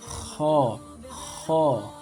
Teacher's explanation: huruf kho makhrajnya di tenggorokan bagian atas ya. Jadi bagian atas akar lidah bertemu dengan langit-langit berdaging ya.